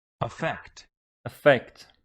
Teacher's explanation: You see that the stress is on the second syllable